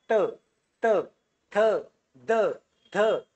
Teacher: ज्यावेळेस तुम्ही त म्हणतात तर तुमची जीभ डायरेक्ट दाताला लागते